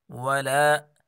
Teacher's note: لام کو کھینچ کر پڑھیں گے، الف مد ہے، الف کے برابر کھینچیں گے